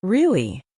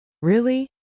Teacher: Try saying, really, rising tone. Curiosity, really, falling tone. Confirmation. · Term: intonation